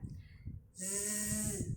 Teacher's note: Jadi ujung lidah sejajar dengan gigi seri bawah. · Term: huruf zai